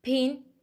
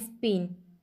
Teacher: in pin is aspirated and in spin it is unaspirated aspirated means with a strong puff of breath after release of